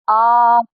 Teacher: मध्य स्वर जब हमारी जीभ का बीच का हिस्सा जो है वह उठे तब और पश्च स्वर जब हमारी जीभ का पिछला हिस्सा उठे